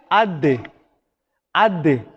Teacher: நாக்குட நுனியை கொண்டு போய்த்து எங்கட மேல் முன்பற்கள் வேர்ல வச்சுதான் அந்த தால் உச்சரிக்கப்படும்